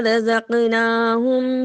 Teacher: رزقناہم قاف کے اوپر قلقلہ کیا، نون کے اوپر کھڑی الف کو ادا کیا۔